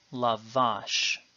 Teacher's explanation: a consonant has one vowel and then ends in a consonant because there is no stress indicated on the word the stress is in fact as normal on the final syllable